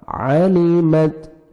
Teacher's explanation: عَلِمَتْ عین کو اپنے صحیح مخرج سے ادا کریں گے تاکہ حمزہ میں ساؤنڈ مکس نہ ہو. گلے سے نکالیں گے ہم عین کو. عَلِمَتْ تا کا ہلکا سا ساؤنڈ آئے گا.